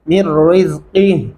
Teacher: पहले मीम को हम रा के साथ मिलाएंगे, ये जो नून है दरमियान में इसको छोड़ देंगे। मिर रिज़्क़िह और काफ के सामने हा जो है ये भारी आवाज में पता चलना चाहिए, वक़फ़ किया आपने, क्या पढ़ेंगे?